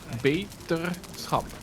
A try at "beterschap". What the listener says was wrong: Schap. There's no L in there.